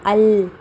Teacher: جس حرف کا مخرج معلوم کرنا ہے اس پر جزم دے کر پہلے الف لگا دیں گے اور ادا کریں گے ال۔ جب ہم کہتے ہیں ال تو ہماری نوک زبان کی نوک ہمارے سامنے کے اوپر کے 2 دانتوں کے مسوڑے کو یعنی اندر والے مسوڑے کو ہماری زبان کی نوک لگتی ہے، تو وہ ہے لام کا مخرج۔